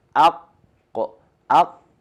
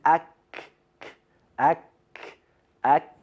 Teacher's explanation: So isti'la is for the letter qaf, which is the elevating quality, and istifal is for the letter kaf, which is the lowering. In the qaf, the root of our tongue elevates towards the hard palate, towards the roof of our mouth. And in the letter kaf, the root of our tongue goes towards the lower place. · So that soft palate is not the same as the soft palate we use for the letter qaf. So the best way to understand the point of articulation of letter qaf is like this, to saying aq, aq, and then for the letter kaf further, you say ak, ak, ak.